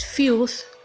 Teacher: It is th. When pronouncing this word, you lift your tongue in a manner that it's gonna be touching your upper teeth. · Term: th sound